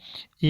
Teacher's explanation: या तालव्य है, यानी तालु से बोला जाता है। इसका उच्चारण स्थान है तालु से, इसलिए इसको बोल दिया हमने तालव्य व्यंजन।